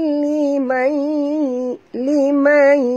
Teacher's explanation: Tanwin bertemu dengan lam. Ya. Jadi kita kena masukkan tanpa dengung idgham bila gunnah